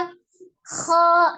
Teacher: Diucapkan dengan cara mengangkat pangkal lidah. Pengucapannya diucapkan dengan cara mengangkat pangkal lidah. Bukan dengan cara memonyongkan ke dua bibir ya. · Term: huruf yang tebal